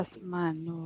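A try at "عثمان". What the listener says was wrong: Utsman ya, bukan Asman tapi Utsman. Utsman ya, pakai fa. Utsman. Nah, pakai ain juga ya.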